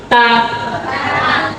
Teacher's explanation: Lidahnya menyentuh gigi seri bagian atas dan bagian dalam. Ta, bagian dalam lo ya, bukan bagian luar.